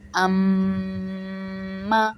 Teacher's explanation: غنہ ناک میں آواز چھپانے کو کہتے ہیں۔ آپ کے دونوں ہونٹ مل جائیں گے اور ناک میں آواز جائے گی